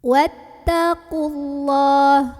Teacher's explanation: wawunya jangan sampai dipanjangin dulu, langsung tekan ke ta ya. Alifnya ini bukan pemanjang, ini hamzah wasol namanya ya.